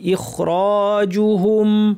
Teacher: হামজা শক্ত খ ভারী র ভারি